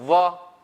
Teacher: પણ વ છે ફક્ત ઓષ્ટ્ય નથી, દંતનો પણ ઉપયોગ છે. તમે વ બોલશો ને તો ઉપરના દાંત નીચેના હોઠને અડશે. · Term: દંતોષ્ઠ